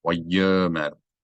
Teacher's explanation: Which means that this aleph has no vowel of its own, and therefore it is silent. Wayomer, you read it as if the aleph's not there, no glottal stop.